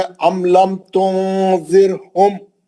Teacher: जब भी रोकेंगे मीम साकिन का इजहार होगा, मीम को जल्दी पढ़ेंगे वो रोकने की सूरत में।